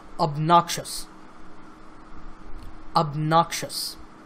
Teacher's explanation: obnoxious behavior now this word has three syllables of noxious and the stress is on the second syllable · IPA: /əbˈnɑːk.ʃəs/